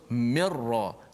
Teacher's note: Jangan minra, jangan ada unsur-unsur nun lagi. Kerana nun masuk secara total masuk dalam ra. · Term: idgham bila gunnah